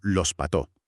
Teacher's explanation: la aspiración de la S al final de la sílaba, que hace que los pastos suene como los pató